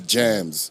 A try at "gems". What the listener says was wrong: Gems. Gems. You said germs.